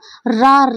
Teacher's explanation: जब हम रा बोलते हैं तो एकदम जीभ में क्या है, कंपन होता है। ठीक है, जीभ में कंपन होता है और क्या है, एकदम लुढ़कती हुई आती है जीभ बाहर, तो लुंठित हमारा क्या हो गया, रा।